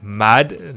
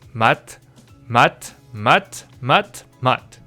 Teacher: they all turn into a T kind of sound when it's a 받침